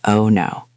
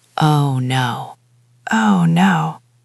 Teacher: But again, the music matters. The pitch must go down. You cannot say oh no with a smile or a high voice. It has to be lower.